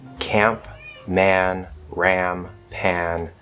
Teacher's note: display an a that is raised or tense before the front nasals such as camp man ram pan